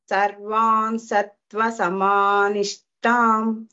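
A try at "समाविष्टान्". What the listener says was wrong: Vishtan va. It is not Nishtan. Vishtan.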